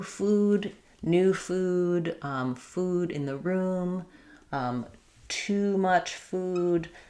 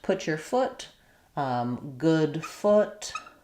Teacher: So, the difference is basically if we look at the vowel quadrangle, these are both back here in the high back vowels, they're both rounded. The oo is tense. Ooh. My tongue is as high as possible and then the uh is lax and the tongue is a little bit lower.